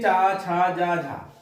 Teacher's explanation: स्पर्श संघर्षी व्यंजन यानी ये स्पर्श में भी है और संघर्षी भी है